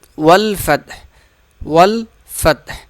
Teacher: واو لام سے مل جائے گا، یہ الف نہیں پڑھا جائے گا۔